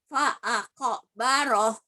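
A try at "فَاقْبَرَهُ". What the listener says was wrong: Nah, itu sih namanya nggak mantul. Diulang lagi.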